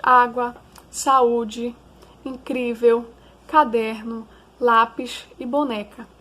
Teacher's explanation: essas palavras são paroxítonas porque a sílaba tônica delas é a penúltima